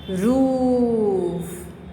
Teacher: जैसे कि हिंदी में बड़ी ऊ की जो मात्रा होती है वही इंग्लिश में डबल ओ लॉन्ग ववल साउंड होता है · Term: Double O long vowel sound